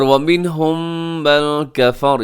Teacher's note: میم ساکن کے بعد میم، یہاں پہ ہوگا ادغام شفوی